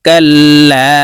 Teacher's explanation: আলিফ জবর জবরের বাম পাশে খালি আলিফ মদের হরফ তাই এই লামকে এক আলিফ টেনে পড়বো